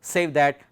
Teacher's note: In the case of trochee, we find the stressed syllable comes in the first word save, and in the case of pyrrhic there is no stress.